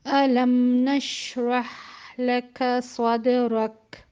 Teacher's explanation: دال جو ہے وہ اس میں قلقلہ بھی ہے اور شدہ بھی ہے، دونوں صفات اس میں موجود ہیں، تو اس کو جلدی ہم ادا کریں گے، جھٹکے کے ساتھ ادا کریں گے